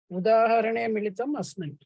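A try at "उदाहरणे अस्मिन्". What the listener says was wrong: Well done.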